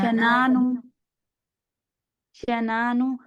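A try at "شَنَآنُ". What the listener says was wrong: अच्छा यहाँ देखिए, शनानु नहीं करेंगे, दोबारा से इसको शनानु हमजा है ना, हमजा को टाइम देना है और हमजा को मुहक्कक अदा करना है जी।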